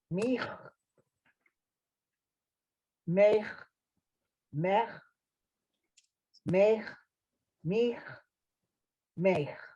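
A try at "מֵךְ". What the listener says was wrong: Very nice. Thank you.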